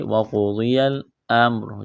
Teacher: کرنا ہے، یا کو لام کے ساتھ ملائیں گے، وَقُضِيَ الامر، جب یہاں پر وقف کریں گے تو را کو ساکن کریں گے